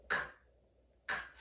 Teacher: At the very back of our mouth, we have K, k, k. The back of the tongue is moving this time, not the tongue tip. The back of the tongue reaches up to the hard palate, k, k, and makes contact. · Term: velar sounds